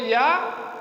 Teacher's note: जिह्वा भी पूरी तरह से वायु को अवरुद्ध नहीं कर रही है या के उच्चारण में। इसीलिए क्या बना, अंतस्थ प्रयास।